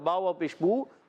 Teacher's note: बा व पेशबू वश रबू वश रबू मद्दाब वशरबू में र पुर करेंगे और बा व पेशबू वाऊ मद्दा एक खींच कर अदा करेंगे